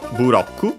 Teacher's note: Accented on the ro as expected, just like in English, block. Notice the doubling of the consonant, the additional u for both u, bu, and ku, because the consonants can stay on their own. · the English L becoming Japanese R